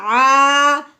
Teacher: عین الف زبر ع، بی ع، یہ جو میں نے کہا نا ع، یہ جو لمبا کیا ہے یہ الف سے پہلے زبر آنے کی وجہ سے ہم نے عین کو لمبا کیا ہے